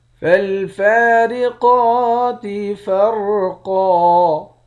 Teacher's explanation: فا پر کھڑا زبر ہے، قاف پر بھی کھڑا زبر ہے، دونوں کو ایک ایک الف کی مقدار کھینچیں گے ، قاف کو موٹا بھی پڑھیں گے، اس والے را اور · پڑھیں گے، ایک الف کی مقدار کھینچ کر بھی پڑھیں گے، آخر میں دو زبر کی تنوین ہے، دو زبر کی تنوین میں جب وقف کرتے ہیں تو ایک زبر بن جاتا ہے۔